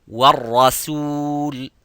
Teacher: Al-rasul, not al-rasul. So the ra is mufakham, as you can see, but the sin is muraqqaq. So you would say wal-rasul.